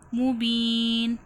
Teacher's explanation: وہ سلطان مبین، با یا زیر بی، یا مدہ ہو رہا ہے، یا ساکن سے پہلے زیر ہے، تھوڑا کھینچ کے پڑھا جائے گا